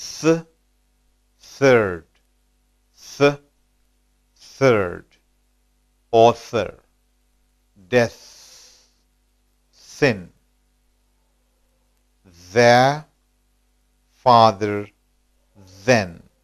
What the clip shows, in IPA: θ and ð